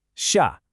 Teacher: Feel that abrupt drop in your voice. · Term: fourth tone